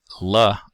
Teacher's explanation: the tongue tip contacts the alveolar ridge but additional articulation is done by the tongue body to allow lateral airflow